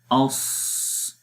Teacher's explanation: مخرج کے اندر تو آواز آئے گی اس، سانس بھی جاری ہو رہا ہے، آواز بھی جاری ہو رہی ہے۔ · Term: رخاوت